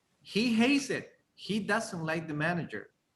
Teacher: So you have intonation in hates and doesn't.